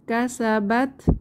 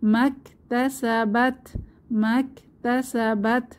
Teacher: তাতে সাকিন আছে তাহলে একটু হামস বা বাতাসের মত বের হবে